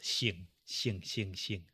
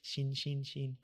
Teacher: 姓, the fourth tone, the falling tone, going down tone.